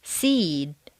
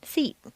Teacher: a final voice consonant causes the previous vowel to double · what appears to be a single syllable word will have a longer sound to it seed takes longer to say than seat